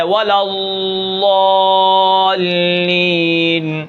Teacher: استطالت یعنی ضاد کی ہے، یعنی آواز کو امتداد رہتا ہے